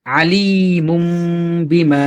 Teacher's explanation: তানভীন এরপরে যদি ঠিক তারপরেই একটা বা যদি আসে তাহলে সেই তানভীনটা আর তানভীন থাকবে না মিম সাকিন হয়ে যাবে